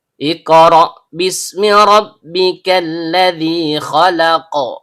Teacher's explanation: Ra, ujung lidah bertemu dengan bagian belakang langit-langit mulut. Karena ra memiliki fathah, aturan bacaannya tebal atau tafkhim. Kemudian ada hamzah dalam bentuk alif, atau hamzah qat'i, yang keluar dari tenggorokan bagian bawah. · Bunyi tersebut dimulai dengan hamzah dalam bentuk alif, atau hamzah qat'i, yang keluar dari bagian bawah tenggorokan. Qaf, pangkal lidah, naik ke langit-langit di atasnya.